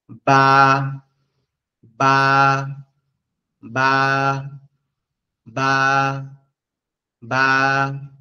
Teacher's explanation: বা অক্ষরটা আমাদের এই ঠোঁটের উপরের নরম জায়গা এবং নিচের ঠোঁটের নরম জায়গা, এই দুই জায়গা থেকে কি হবে, বা অক্ষরটা উচ্চারিত হবে।